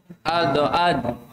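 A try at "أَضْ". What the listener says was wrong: Hanya tipis, jangan o ya. Ado ad. Tapi a tipis.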